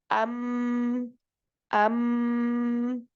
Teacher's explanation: kalau mim ini syidahnya di bibir lalu khahnya pada hidung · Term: huruf mim